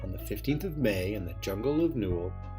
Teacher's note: 2 unstressed syllables followed by 1 stressed, over and over